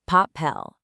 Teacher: The word pel ends in L, which isn't an N or an S. So the stress is normally on the last syllable.